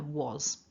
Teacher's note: Was, with a vibration in the throat and the end there, was.